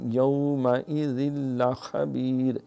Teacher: تنوین کے بعد لام جو ہے وہ یرملون کی ادغام ہے لیکن بغیر گننے کی